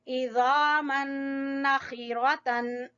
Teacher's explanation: खा अदना हलक से